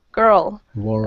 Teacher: dark L's and so this is how you pronounce them um with the dark L it's similar to the light L except your tongue the tip of your tongue is further back in your mouth